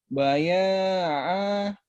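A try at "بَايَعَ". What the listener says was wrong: Baya'a. Jangan ada ahnya. Baya'a. Jangan baya'ah. Baya'a. Panjang tapi ya. Baya'a.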